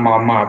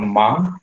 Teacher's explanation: Jadi ada bunyi M yang pelafalannya bilabial. Jadi bibir atas bertemu dengan bibir bawah.